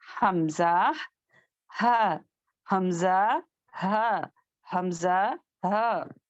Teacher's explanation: اقصا، یعنی کہ اندر کا حصہ، closest part of اوور throat, اندرونی حصہ. تو یہاں سے ادا ہونے والے 2 لیٹرز ہیں، حمزہ ہ، حمزہ ہ، حمزہ ہ، حمزہ ہ، حمزہ ہ.